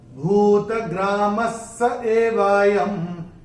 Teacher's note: पहले चरण में म के बाद विसर्ग के बाद का अक्षर है स, और विसर्ग के बाद जब श, श या स आता है तो विसर्ग का उच्चारण आधा श, श या स होता है। चूंकि यहाँ पे स आया है तो इसका उच्चारण, विसर्ग का उच्चारण होगा आधा स।